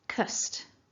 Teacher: so focusing in on syllable 2 then we've got a so no voicing there we've got that weak schwa and then a nice st ending st so with the st you'll notice that it's a ending · with the st, you'll notice that it's a t ending and not a d